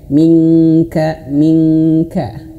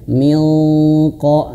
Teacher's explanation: nun mati bertemu huruf qf, maka didengungkan dan ditebalkan.